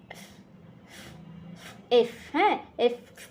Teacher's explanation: এফ এটার উচ্চারণ হবে উপরের দাঁত নিচের ঠোঁটের সঙ্গে লাগিয়ে।